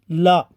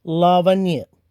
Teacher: ला यह अल्पप्राण वस्य घोष है इसे पार्श्विक भी कहते हैं जीभ की नोक मसूड़ों का अच्छी तरह से स्पर्श करती है